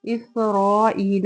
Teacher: را جو ہے اس پہ زبر ہے اس کو پر ادا کریں گے۔ ایلا میں دیکھیں ای پہ یا مدہ ہے، اس کو بھی ہم 2 حرکت لمبا کریں گے۔